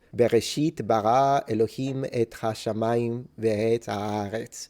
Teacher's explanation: modern Hebrew speakers tend to pronounce the R like the French do